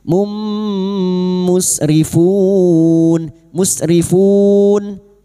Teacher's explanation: Masuk dengan mendengung. Masuk pada huruf mim dan mendengung selama tiga harakat. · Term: idgam bighunah